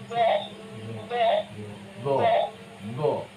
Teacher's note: Do-nya bukan hanya membulatkan bibir, do, tapi juga menebalkan di dalam dengan cara mengangkat pangkalnya.